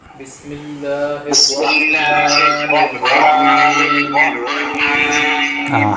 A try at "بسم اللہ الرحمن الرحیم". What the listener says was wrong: ہا کی آواز نہیں آ رہی. رحیم.